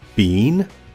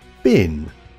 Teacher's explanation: the difference between the long vowel in been and the short vowel in bin